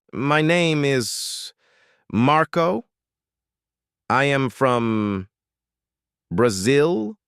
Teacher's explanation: Suddenly your voice goes up. It becomes thin. It becomes fast. You sound like you are asking a question even when you are making a statement. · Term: uptalking